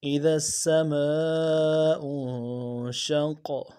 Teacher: قاف حروف قلقلہ میں سے موٹا بھی کریں گے، قلقلہ بھی کریں گے